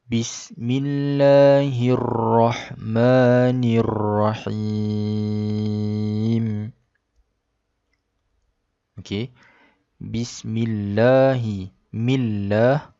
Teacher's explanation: Millah. Lafaz Allah dibaca secara nipis kerana sebelumnya huruf mim itu berbaris bawah. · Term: dibaca nipis